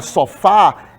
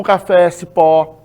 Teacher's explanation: a palavra sofá, ela é oxítona, porque a sílaba tônica é a última.